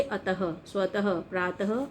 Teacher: अब है विसर्ग। तो विसर्ग इसका उच्चारण ह के समान होता है। इसका उच्चारण अः होता है।